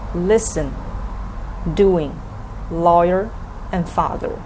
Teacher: these four you will see the first syllable is stressed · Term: stressed syllable